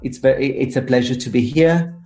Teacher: they kind of have an ascending tone at the end of the sentence · you can hear that it kind of goes up as if you were thinking about what you're saying